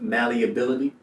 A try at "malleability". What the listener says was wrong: Like you're missing a syllable.